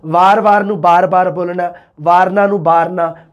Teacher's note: ਦੁਆਬੀ ਦੇ ਵਿੱਚ ਵੀ ਮਲਵਈ ਵਾਂਗ ਵੈ ਨੂੰ ਬੈ